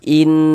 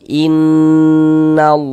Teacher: Cara membacanya digunahkan. Jadi dighunahkan tuh ya didengungkan. Jadi di bagian in suaranya itu kita tahan. Kita tahan. Kita panjangkan sebentar. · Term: ghunah musyaddadah